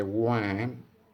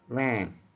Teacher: Sounds are produced with the upper row of teeth, against which lower lip is moved and closed, then air is released slowly with a friction, like and voiceless waist, fine, like that, and vein, like that. So lips are spread in position, not round as we make the sound wa or oo. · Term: labiodental